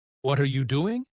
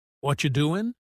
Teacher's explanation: They connect their words. Instead of what are you doing, they say what you doing.